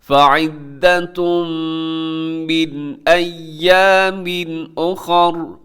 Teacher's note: اخر میں خا موٹا ہے، را بھی موٹا پڑھا جائے گا، اور را کے اوپر زبر ہے لیکن وقف کر دیں گے تو را ساکن ہو جائے گی۔ · ایامن کے آخر میں تنوین پھر حمزہ، یہاں بھی آپ نے اظہار کرنا ہے، غنہ نہیں کرنا